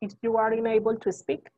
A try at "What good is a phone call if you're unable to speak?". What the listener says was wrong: Unable. If you're unable to speak. It's not you are, it's your. What good is a phone call if you're unable to speak?